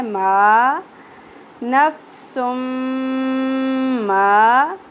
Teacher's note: ما زبر کے ساتھ الف حرف مدہ ایک الف کے برابر کھینچنا ہے